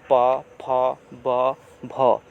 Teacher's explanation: इसमें कौन कौन आता है, तो हर्षऊ, दीर्घऊ, प वर्ग, ठीक है, प वर्ग में जो भी है आपका प, फ, ब, भ, जब ये सब वर्ण बोलते हैं ना तो हमारा जो ओष्ठ है, दोनों होंठ आपस में सट जाता है। दोनों होंठ आपस में सट जाता है, इसीलिए इसे औष्ठ्य वर्ण कहा जाता है